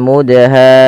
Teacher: Perhatikan di sini teman-teman, pada lafal mudha, di sini ada huruf dal yang berharakat sukun dan di sini diwarnai dengan warna biru yang artinya huruf dal ini wajib kita baca dengan bacaan qalqalah. Yaitu huruf dalnya harus memantul ya, harus kita pantulkan